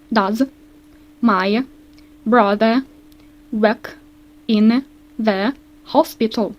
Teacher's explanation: Бачите, в нас буде низький висхідний тон. Зауважте, що він може малюватись або ось так, або ось так.